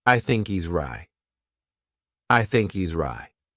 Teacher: at the end of the word right there's no t- sound